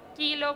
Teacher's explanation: ese sonido se llama oclusivo velar